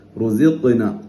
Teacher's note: ഖാഫിന് സുക്കൂനാണ്, ഖൽഖലത്ത് വരണം, പരിപൂർണ്ണ സുക്കൂൻ കൊടുത്തിട്ടാണ് ഓതാൻ. റുസിഖ്ന എന്ന് ഓതാൻ പോരാ, റുസിഖ്ന എന്ന് തന്നെ ഓതണം.